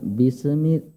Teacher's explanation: pada kalimat sin sukun atau sin yang mati itu jangan sampai ada pantulan